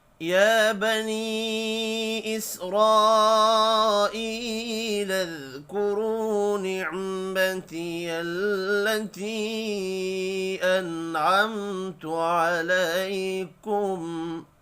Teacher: نون ساکن کے بعد عین ہے، اظہار حلقی ہوگا، غنہ نہیں ہوگا۔